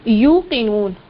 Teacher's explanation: پیش جو ہے یہ ہونٹوں کو گول کر کے ادا کرنا ہے